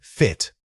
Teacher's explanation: Focus on the initial consonant F, making sure it's a clear friction of air over your teeth. Then, drop into that relaxed short vowel quickly.